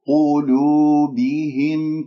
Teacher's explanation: كل حروف كلمة قلوبهم مرققة إلا القاف